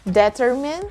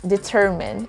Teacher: the first one is determine the second one is determine it goes up on the second syllable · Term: stress